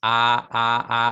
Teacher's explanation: la boca se abre tanto que la A queda completamente abierta hacia afuera, ¿no? Por eso es una vocal abierta.